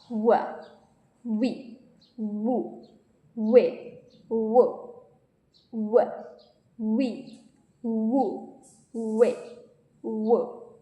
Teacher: It is a glide meaning your mouth shapes moves quickly into the next vowel sound. To make the W sound, you must round your lips very tightly, almost like you are preparing to whistle or give a quick kiss. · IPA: /w/